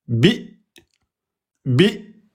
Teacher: Donc, vous prononcez bi avec Hamza soukoun. Pareil, on bloque les cordes vocales.